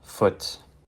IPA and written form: fʊt (FOOT)